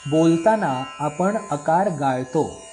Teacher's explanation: आपण ल लिहिलेला आहे, पण बोलताना ल एवढाच उच्चार केला. बोलताना आपण प आणि ण या दोन्ही ठिकाणी अकार आहे, पण आपण फक्त प चा आकार उच्चारतो, ण चा आकार लुप्त · पहिल्या शब्दातला ल गाळला, म्हणजे लकारामध्ये अकाराचा आपण उच्चार केला नाही. आपण ल लिहिलेला आहे, पण बोलताना ल एवढाच उच्चार केला. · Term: अकार लुप्त